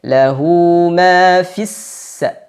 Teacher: Fi sebenarnya mad tabi'i juga panjang 2 harokat, akan tetapi karena ada huruf sukun, yakni lam sukun setelahnya, maka hilang mad tabi'inya, hilang madnya. Jadi tidak dibaca panjang.